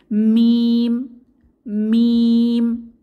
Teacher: মিম হরফটি উচ্চারিত হবে দুই ঠোঁটের শুকনো স্থান থেকে, অর্থাৎ বাইরের অংশ, যেখানে আমরা লিপ বাম ইউজ করি বাইরের অংশ থেকে মিম হরফটি উচ্চারিত হবে।